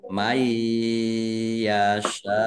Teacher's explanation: Nun sukun bertemu dengan huruf ya, idgham bi gunnah. Masuk dengan mendengung, yaitu mendengung ya. Masuk ke huruf ya dan ditahan biar mendengung. · karena bertemu dengan huruf hamzah dalam satu kata, maka menjadi mat wajib muttasil. Dibaca panjang harus 5 harokat